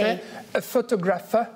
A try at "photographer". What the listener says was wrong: Et c'est là où c'est très difficile, effectivement, pour les francophones. C'est parce qu'on met l'accent ailleurs que sur photographe. Et puis, pour ce mot-là, on dit photographer. Photographer.